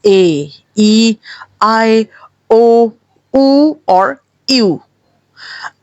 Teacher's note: कहीं पे भी आपका मुंह बंद नहीं हुआ जबान नहीं हिली है। सिर्फ मुंह खुला है और आवाज बाहर निकली है।